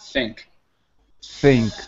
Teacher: if you put your hand on your throat, you shouldn't feel anything when you're saying think.